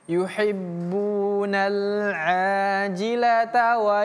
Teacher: Yang ini namanya huruf ta marbutah. Ta marbutah kalau disambung bacaannya menjadi ta. Tapi kalau dihentikan atau disukunkan bacaannya maka dia menjadi ha.